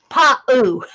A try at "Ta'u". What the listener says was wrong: T-A-U. Ta'u. No, it's a T, not a P.